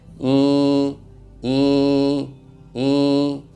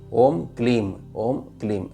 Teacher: मा जो है उसको थोड़ा सा मीठा करके ई में ही जोड़ के ई को लंबा खींचा तो ऊर्जा बिल्कुल परफेक्ट आने लग गई तो शुरू में आप